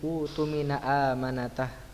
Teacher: hamzah yang pertama berharokat dhammah dan hamzah kedua bertanda sukun, maka hamzah yang kedua diganti dengan waw, sehingga termasuk dari mad badal dibaca dari utumina amanatah.